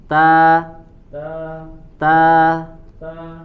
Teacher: makhrajnya ujung lidah bertemu dengan tempat tumbuhnya gigi